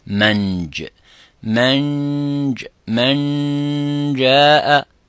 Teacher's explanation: As you can see, the tongue is going into the roof of the mouth, the middle part of the tongue is going to the roof of the mouth